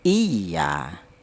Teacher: ada ya yang bertasdid yang didahului huruf yang berharakat kasrah yaitu dibaca nabr